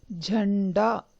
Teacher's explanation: झंडा में अनुस्वर के बाद ड आया है। ड वर्ग में पंचम वर्ण न है, इसीलिए उसका उच्चारण झंडा इस तरह किया जाता है।